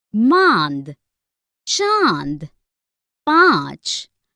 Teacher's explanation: इसे अनुनासिक स्वर कहते हैं। इसका उच्चारण नाक और गले दोनों से होता है।